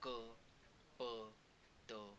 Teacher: अल्पप्राण म्हणजे तेच की ज्याच्यामध्ये ह चा हा उच्चस्वर लागत नाहीये